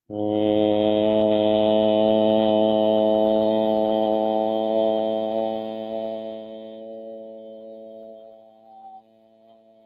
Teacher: it's a pure nasal sound not found in English but found in French and Portuguese and other languages